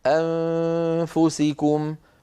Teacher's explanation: أنفسكم، هذه النون بعدها فاء، نون ساكنة بعدها فاء، فحكمها الإخفاء. لابد من أن ينتقل الإنسان من الهمزة إلى مخرج الفاء أنفسكم، ويأتي بغنة من أنفه